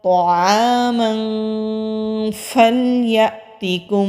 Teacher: अज़का अज़का तआमन फलयअतिकुम, मोटे हरूफ में से है यानी कि मुस्तालिया हरूफ में से है तो मोटा पढ़ेंगे। आइन हरूफ हल्की है, हलक से अदा होगा। आगे खाली अलिफ है, खाली अलिफ से पहले ज़बर हो तो अलिफ मद्दा होता है, एक अलिफ के बराबर खींच कर पढ़ते हैं।